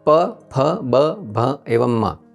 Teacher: इन 5 व्यंजन का जन्म 2 होठों के स्पर्श होने के पश्चात ही हो सकता है, इसलिए उसे ओष्ठ्य व्यंजन कहते हैं।